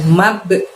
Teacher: di situ ada ba sukun, maka kita mantulkan